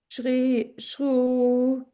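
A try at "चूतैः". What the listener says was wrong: give the visarga. Ra will go and visarga will come out there. Chutaihi. So, chaitaihi, the ra has gone.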